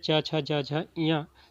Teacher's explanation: कुछ विद्वान जो है च वर्ग को स्पर्श संघर्षी भी मानते हैं। च वर्ग जो है हमारा ये वाला, ठीक है, जिसमें च छ ज झ इयां, इसको तालव्य भी बोलते हैं।